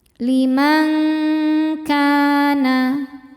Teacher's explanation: Cara bacanya bunyi nun disamarkan ke kaf disertai bunyi dengung. Dengungnya besar ya, karena kaf makhrajnya jauh dari nun. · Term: ikhfa hakiki ab'ad